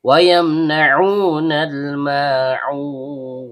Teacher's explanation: Kemudian ain, tenggorokan bagian tengah, karena ainnya berharokat dhammah diikuti wawu sukun yang keluar dari bibir, maka terjadi hukum bacaan mad tabi'i, panjang 2 harokat · maka di sini terjadi hukum bacaan idhar syafawi, dibaca jelas tanpa dengung